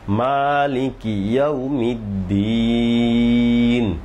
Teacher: মালিকি মিমে টান এটা অনেক সময় অনেকের অনেকের উল্টাপাল্টা হয়ে যায় মালিকিউমিদ্দিন শেষের তিন টান আছে